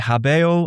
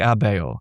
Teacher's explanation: people are dropping their hes in Latin · And it happened also in late Latin, where we can see, I love this, we can see in kind of non-standard inscriptions and texts from the Roman Empire that people are dropping their H's in Latin. There's this pronouncing, whereas once they would have said habeo, I have, they're starting to say things like abeo.